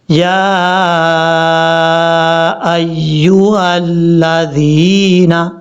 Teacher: ذال کو بغیر سیٹی کے ساتھ پڑھا جائے گا